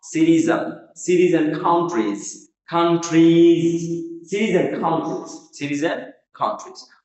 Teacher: and কে সবসময় আমরা and বা আন উচ্চারণ করতে পারি।